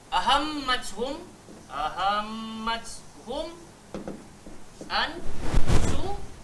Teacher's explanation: So bibir tu dia buat kerja sambil jelas. Dia tak perlu kepada dengung. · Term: izhar